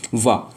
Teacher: ऊपर वाले जो दांत हैं नीचे वाले होठ से टच करेंगे। · जो वाह है हमारा दंतोष्ठ ध्वनि उत्पन्न करता है